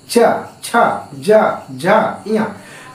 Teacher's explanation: और दूसरा हमारा होता है तालव्य। तालव्य, तालव्य यानी जीभ हमारा ऊपर सट जाता है बिना मुड़े